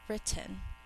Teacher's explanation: in normal speech we only hear one of the t sounds but we think to spell both of them so that we